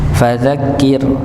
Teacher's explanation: Ya, fadzakir, ya, dibaca tipis. Dikarenakan ketika ra sukun sebelumnya berharakat kasrah, maka dibaca tipis.